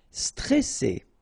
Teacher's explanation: you get double S here, so you pronounce it really strong while it's between two vowels